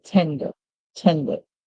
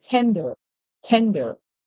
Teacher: For me, with the British pronunciation, I'll say tender, tender, because the ER is pronounced as a schwa sound in British, while the Americans would give it a longer sound